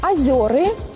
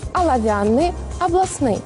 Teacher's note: Калі на пачатку слова стаіць націскны о, перад ім звычайна развіваецца прыстаўны в, напрыклад, возера, [музыка] волава, вобласць. Аднак, калі гэты о становяцца не пад націскам і пераходзіць у а, так званае аканне